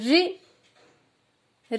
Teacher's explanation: अब रि में हमारे मुंह में वायु बाधित हो रही है। रि मूर्धा, ऊपर जीभ ऊपर छूती है, पीछे पलट जाती है।